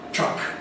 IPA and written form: trʌk (truck)